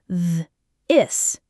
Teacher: you engage your vocal cords, creating a vibrating buzzing sound. You should feel it in your throat.